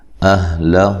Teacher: حمزہ کو تحقیق سے ادا کرنا ہے، لام کو موٹا ادا نہیں کرنا۔ ہو مد اصلی ہے۔